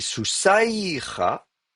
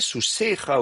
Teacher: Et ce aïe, c'est contracté en ei ou en e. Donc effectivement, quand vous le voyez écrit comme ça dans le texte massorétique, le iode, comment dire, la diphtongue a été contractée et donc le iode n'apparaît plus que comme mère de lecture. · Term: diphtongue aïe